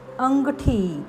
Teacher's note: अंगठी अनुस्वाराचा उच्चार ग आहे